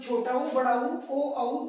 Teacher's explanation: ये सारे के सारे बोलने में होठ जो है वो गोलाकार हो जाए, वर्ताकार हो जाए, इसलिए वर्तमुखी।